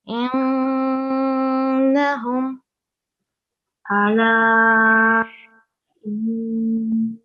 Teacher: And here as well we have a noon mushaddad. So this is a bit stronger nasal sound.